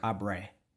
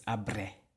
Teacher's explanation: you have to roll that R, trill it